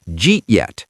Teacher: We drop the did completely. We just say J. Then we connect eat and yet. The final result is two syllables.